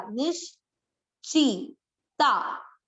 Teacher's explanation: आधा श नी के साथ पढ़ा